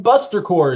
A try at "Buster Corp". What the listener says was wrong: People always mispronounce that thing. It's like corpse. It's a corp.